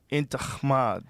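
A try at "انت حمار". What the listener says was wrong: But see, you're saying kh. It's h.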